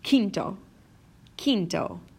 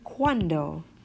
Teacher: there's no quoi to it